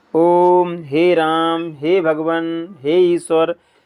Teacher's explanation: इनमें तीन गुना समय लगता है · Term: प्लुत